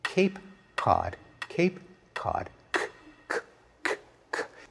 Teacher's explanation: In one case, the k is produced way back in the mouth. The other, it's produced much farther forward. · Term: co-articulation